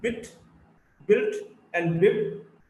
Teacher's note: the sound B, is a voiced bilabial plosive. The B is in bit, built, and bib.